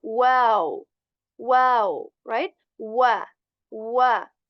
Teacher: When we are saying wow, then our lips should be in round position.